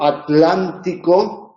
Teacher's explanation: la t y la l se separan sería la la excepción la t es sorda oclusiva y la l es líquida · en la pronunciación la t y la l se separan sería la la excepción la t es sorda oclusiva y la